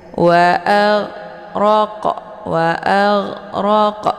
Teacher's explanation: di tenggorokan bagian atas sejajar dengan huruf Kho jadi cara bacanya ginnya itu dialirkan setengah saja tidak boleh ditekan jangan AG sehingga terkeluarkan suara yang memantul waag waag ya jadi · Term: huruf Gin